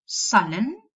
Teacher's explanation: So in words such as sullen, you will pronounce a schwa.